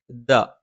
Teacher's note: നാവിന്റെ അറ്റം മേലെ മുൻബല്ലിന്റെ മുരട്ടിലാണ്